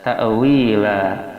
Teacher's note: La madnya mad iwad, itu mad artinya panjang, iwad ganti tanwin kepada fathah sehingga dipanjangkan 2 harakat